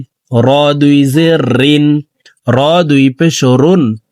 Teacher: র হরফকে জিব্বার আগার পিঠ থেকে পড়ব।